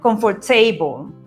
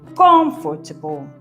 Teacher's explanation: ¿cuál es la acentuada en comfortable? La primera, comfortable.